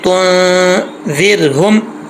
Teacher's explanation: 1 अलिफ की मिकदार गुन्ना करेंगे। आगे ज़ाल है, ज़ाल बरीक पढ़ा जाएगा नॉर्मल, और रा साकिन है, लेकिन यहाँ पर रा साकिन से पहले ज़ेर है, इसको बरीक पढ़ेंगे, पुर नहीं पढ़ेंगे। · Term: नून साकिन का इख्फा